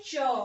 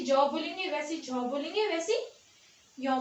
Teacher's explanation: क्यों इनको तालव्य क्यों कहते हैं? क्योंकि जब हम इन वर्णों का उच्चारण करते हैं तो हमारी जो जीभ है वो तालु पे क्या होती है? टच होती है, तालु पे स्पर्श होती है और तब जाके क्या है, इन वर्णों की ध्वनि आती है। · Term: तालव्य व्यंजन